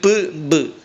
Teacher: p, b രണ്ടും നമ്മുടെ ചുണ്ട് ഇങ്ങനെ ചുണ്ട് രണ്ടും കൂടി ചേർന്നിട്ടാണ് ഉണ്ടാകുന്നത്.